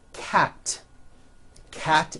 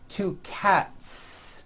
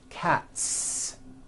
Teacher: cat ends with an unvoiced teeth one cat two cats again the s ending is unvoiced